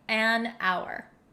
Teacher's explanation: We totally get rid of the H sound.